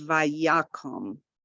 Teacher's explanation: So that first kamatz is ya, and then the second one is ko